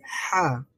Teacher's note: হয় একটু চাপ দিতে হয় চাপ দিয়ে উচ্চারণ করতে হয় হা স্বাভাবিকভাবে আমরা যেভাবে বাংলায় হা বলি বা হ উচ্চারণ করি সেইভাবে নয় সেখান থেকে আরেকটু চাপ দিয়ে হা উচ্চারণ করতে হবে